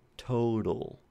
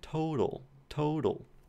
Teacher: So in my dialect of English, that is a flap, total.